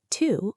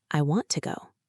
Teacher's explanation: >> Exactly. Your brain is scanning for the strong form to but the speaker is using the weak form t.